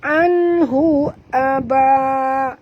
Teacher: nun mati bertemu ha, tak boleh dengung, izhar halqi, bacaannya terang tanpa dengung.